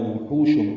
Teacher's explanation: ہا کو وسط حلق سے ادا کرتے ہوئے لمبا کرنا ہے